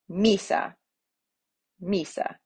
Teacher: the accent goes on the penultimate or in this case the first